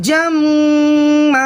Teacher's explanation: ज़बर रह जाता है, तो हालत वक्फ़ में पढ़ेंगे जम्मा, और तशदीद की वजह से मीम में एक अलिफ के बराबर गुन्ना भी होगा